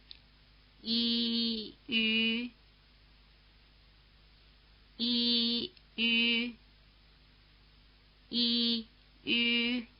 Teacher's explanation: It has roughly the tongue position of the vowel sound E and roughly the lip position of the vowel sound U. If you pronounce the steady E sound and then round your lips into an U position without moving your tongue, you'll get the Y sound. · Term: U umlaut